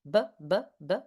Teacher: Those sounds are made with the lips. So again, the P is unvoiced, the B is voiced